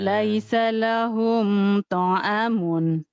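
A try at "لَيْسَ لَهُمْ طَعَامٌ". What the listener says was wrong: to-nya panjang, a-nya panjang. To'amun. Laisa lahum ta'amun.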